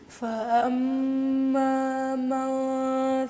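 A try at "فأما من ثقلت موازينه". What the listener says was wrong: فأما کو زیادہ لمبا نہیں کرنا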